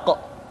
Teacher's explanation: diucapkan dengan suara yang tebal dan dalam posisi sukun maka terdengar pantulan suara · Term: huruf qaf